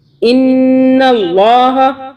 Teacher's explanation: اللہ کو موٹا پڑھیں گے، اللہ سے پہلے نون کے اوپر زبر آ رہا ہے اور نون پہ ہم غنہ کریں گے 2 سیکنڈ کے لیے۔